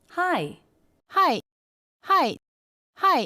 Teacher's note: because it's a greeting and she wants to sound friendly the pitch is higher